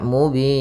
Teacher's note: panjangnya pada lafal bin itu boleh dua harakat boleh empat harakat